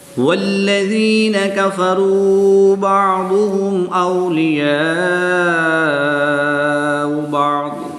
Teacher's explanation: یا ساکن سے پہلے ذال کے نیچے زیر ہے تو یا مدہ ہوگا، ایک الف یعنی 2 حرکات کے برابر کھینچ کر پڑھیں گے